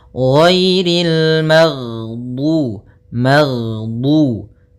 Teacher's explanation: Jahr yaitu tertahannya nafas kita. Jadi ketika melafalkan ghain, nafas kita tertahan, suara kita dialirkan. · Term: jahar